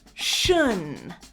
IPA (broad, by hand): ʃən